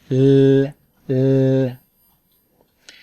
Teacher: First, I'll show you the sound for the beginning or middle of a word. It's a lateral sound, sokumen, so the air goes by the tongue on the sides.